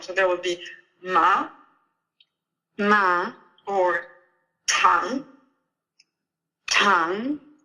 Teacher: you can just imagine a rising arrow when you say the second tone